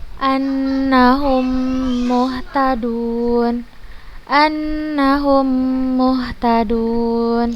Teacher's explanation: Maka cara membacanya, mim yang pertama dimasukkan ke mim yang kedua dan digunakan dengan tempo yang panjang. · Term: idgham mimi